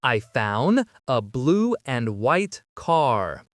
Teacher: Here the word and is being reduced. Just cut off that final D sound.